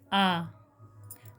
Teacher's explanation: विवृत पूरा मुख खुलता है